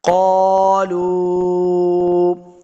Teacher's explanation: قالوا، اس قاف کو موڑک پڑھنا ہے۔ قاف حروف مستعلیہ سے ہے، آگے الف ہے، اس کو 2 حرکات لمبا کر کے پڑھیں گے۔ قالوا، لام پیش واو لو۔